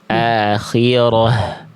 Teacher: Kalau kita berhenti pada huruf ta marbutoh, maka haknya ta marbutohnya dibaca tidak jadi ta tapi jadi ha